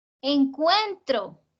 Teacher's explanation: Y eso me permite saber que encuentro tiene 3 sílabas y que la fuerza está en la penúltima